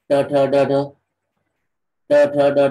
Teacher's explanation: ट ठ ड ढ म्हणताना आपली जीभ जी आहे ती मूर्धेला लागते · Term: मूर्धन्य